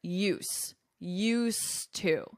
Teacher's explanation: notice the pronunciation because this D, you don't hear it